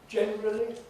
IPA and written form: ˈʤenrəli (generally)